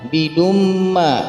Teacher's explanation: ada tanwin di huruf dal bertemu dengan huruf mim, yakni idgham bi gunnah, dibaca dengung 2 sampai 3 harakat. Selanjutnya ada ma di situ, mad tabi'i dan abadtum.